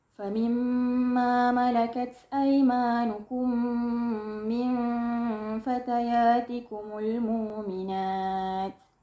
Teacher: dengan perbezaan pada kalimah al-mu'minat yang terakhir dengan diibdalkan hamzah. Famimma malakat aymanukum min fatayatikumul mu'minat.